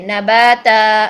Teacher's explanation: اچھا، اس پر وقف کریں گے تو یہ ہم پیچھے دیکھ چکے ہیں کہ 2 زبر پر جب ہم وقف کرتے ہیں، زبر تنوین پر، تو ہم 1 الف کے برابر اس کو لمبا کرتے ہیں اور 1 زبر رہ جاتی ہے.